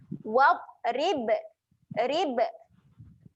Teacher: Ba ketika mati sifat dia ada lantun. Jangan lupa lantunkan dekat huruf ba mati.